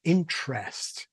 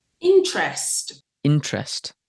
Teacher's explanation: traditional RP had a weak vowel, schwah or I, whereas younger people today have a full vowel. Probably the influence of spelling or something like that.